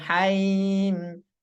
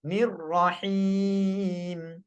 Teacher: Ha baris bawah bunyi hi, bukan hai.